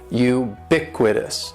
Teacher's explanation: like you're saying the letter U u BIC with this and the stress is going to be on that second syllable · ubiquitous has 4 syllables. That first syllable is just like you're saying the letter U.